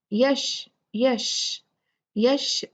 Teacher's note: شین میں ہمز ہے اور اس کی کوالٹی ہے تفشی، سپرے کی کوالٹی ہے